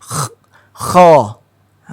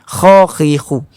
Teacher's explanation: Bila kita sebut kha berbaris atas kha, cara sebutan kita itu kita rasa pada hujung kerongkong. Kha. Seperti bunyi dia seperti mana kita nak seseorang yang nak meludah, dia mengumpul dulu aliu dia ni pada kerongkong ini. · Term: huruf kha